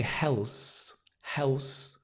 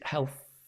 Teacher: the tongue just touches in between the teeth health very very very light very soft your whole jaw is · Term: th sound